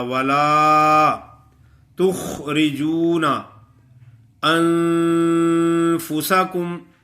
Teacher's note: اخفا کا غنہ یعنی نون کی آواز کو چھپا کر پڑھیں گے، صاف نہیں پڑھیں گے، ایسا بھی نہیں چھپائیں گے کہ نون غائب ہو جائے